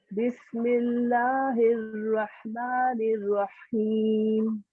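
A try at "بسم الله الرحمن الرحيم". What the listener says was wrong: रॉ को थोड़ा सा और हैवी करें, RAW।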